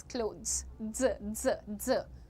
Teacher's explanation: not with a harsh थ sound, थ नहीं बोलना है